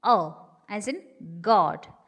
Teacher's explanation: The next one is O as in God. Rounded back open.